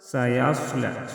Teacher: سيصلى صاد مستعلیہ حروف میں سے ہے، صاد کو موٹا پڑھیں گے۔ لا کڑی زبر ہے، کڑی زبر کو 1 الف کے برابر کھینچ کر پڑھیں گے۔